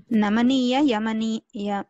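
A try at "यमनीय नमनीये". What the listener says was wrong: మరొకసారి కలిపారండి విడతీయండి ఇప్పుడు యమనీయ ముందర చెప్పే తర్వాత నమనీయ చెప్పండి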